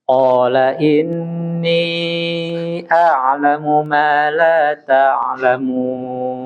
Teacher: Huruf Qaf jangan keluar udara ya. Maksudnya dia harus lebih dalam.